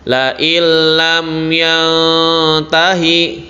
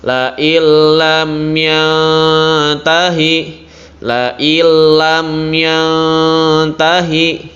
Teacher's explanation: Kalian bacanya juga tidak dibaca dengung, santai aja biasa. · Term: idgham bila gunah